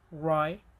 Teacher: In British English, we have alvolar approximate R as in ry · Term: alveolar approximant R